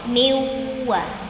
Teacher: Miwa coba miwa. Suaranya asli cuman dari wau doang dari dua bibir.